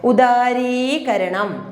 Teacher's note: ഉദാരീകരണം, രീ എന്നുള്ളത് ദീർഘിപ്പിച്ചാണ് പറയുന്നത്.